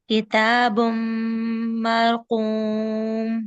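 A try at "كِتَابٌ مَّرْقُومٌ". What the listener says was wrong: उर्दू की तरह किताब नहीं पढ़ें, किताब। रॉ पे तवसुत है । रॉ भी है ना इसमें, मर। मरकूम। इनको रॉ से जल्दी मिलाए, मर ऐसे नहीं, ढीला ढीला नहीं। किताब मरकूम। वाव को होंठ गोल करके पढ़िएगा, वाव गोलाई से।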